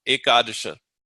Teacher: So it's actually e is a long syllable, ka is a long syllable, and then the last two are short.